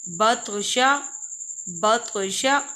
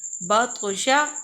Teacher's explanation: ادھر قلقلہ کرنا ضروری ہے جی، جیسے کہ ہم نے طا کو موٹا پڑھنا ہے کہ تا اور طا میں فرق نظر آئے کہ ہم کون سا حروف پڑھ رہے ہیں، کہ ہم تا پڑھ رہے ہیں کہ طا پڑھ رہے ہیں۔